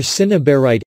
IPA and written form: sɪnəˈbɑːraɪt (cinnabarite)